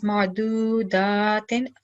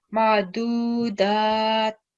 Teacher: So if you were not stopping, you would read it as ma'dudatin. If you were to stop, you would change the kasraten to a sukoon.